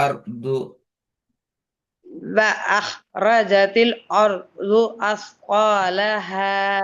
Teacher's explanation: அருது என்கிறத அர்து அர்து கல்கலா பண்ணாம சொல்லணும்